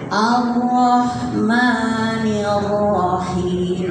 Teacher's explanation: Ro-nya tafhim karena di fathah. Ketika ada ro di fathah itu tafhim bacanya tebal ya.